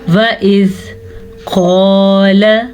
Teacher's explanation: क़ाल मोटा क़ाफ अलिफ मद्दा के साथ और लाम को खींच के नहीं पढ़ना क्योंकि लाम पे ज़बर है।